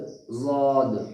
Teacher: ज़ाद का जो मखरज है वो मखरज है जबान की करवट और ऊपर के दाढ़ की जड़